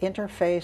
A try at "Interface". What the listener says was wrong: It's not interfaith, it's interface. Like interface.